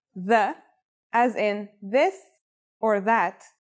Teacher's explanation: This letter's pronunciation is a voiced sound, the, as in this or that. It's pronounced with the tongue between the upper and the lower teeth.